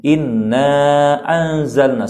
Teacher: inna kita panjangkan hingga 4 harakat. Boleh sampai 5, ataupun boleh kita membaca dengan 2 juga boleh. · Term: mad munfasil